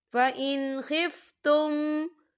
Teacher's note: حدود اللہ فَإِنْ خِفْتُمْ، فَإِنْ یہاں نون ساکن ہے اور نون ساکن کے بعد خا آ رہا ہے، خا جو ہے حروف ہلکی کا ورڈ ہے، تو یہاں پر اظہار ہوگا، ہم یہاں غنہ بالکل نہیں کریں گے